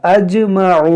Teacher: اج یہ جیم میں قلقلہ ہوگا